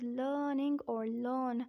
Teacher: It is pronounced as learning or learn because R has to be kept silent.